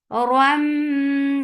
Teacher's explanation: keep the sound in your nose for a longer time. Min for kasra, give e sound attached. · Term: idgham with gunna